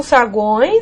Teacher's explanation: Esse E tem som de I, semivogal. Então, saguões, nós estamos lidando também com o tritongo nasal.